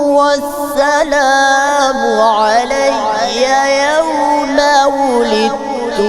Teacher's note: تو سوائے والسلام سین میں سیٹی کی تھوڑی کمزوری تھی